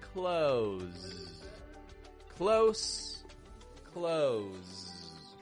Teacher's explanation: Notice how that fricative sound just trails off at the end. It's not a close, close, releasing an extra burst of sound, but rather it's fading, getting weak.